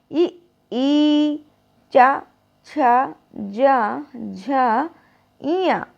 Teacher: जो आपकी जीभ है वो कहाँ टच कर रही है, ऊपर तालु पे टच कर रही है ना।